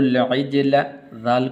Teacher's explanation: ذال کو آگے لام کے ساتھ ملانا ہے